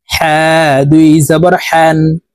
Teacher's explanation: হা হরফ হলকের মধ্যখান থেকে উচ্চারণ হবে